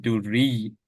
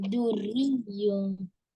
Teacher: Doesn't have to pronounce the U sound. Just duri. You get it?